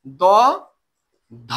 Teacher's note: ধকে জোর দিতে হবে যেহেতু সেটা মহাপ্রাণ। না হলে হবে কি দয়ের উচ্চারণ আর ধয়ের উচ্চারণ প্রায় একরকম হয়ে যাবে।